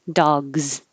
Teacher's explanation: Dog is voiced, so it looks like an S, but it sounds like a Z.